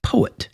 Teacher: And then the opposite of an iamb, is a trochee, and you can think of a word like poet. So you have the emphasis on the po, and a de-emphasis, you could say, or a falling away of the et, poet. Almost like et is an afterthought.